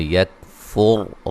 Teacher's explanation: را کو موٹا ادا کریں گے، را ساکن سے پہلے پیش ہے